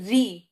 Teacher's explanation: फिर री, तो आपकी जबान री ऊपर लग रही है, तो री जब आप करते हैं तो जबान पलटती है, तो ये हो गया आपका मूर्धा, मूर्धा से निकल रहा है, तो मूर्धन्य स्वर हो गया।